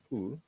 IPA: u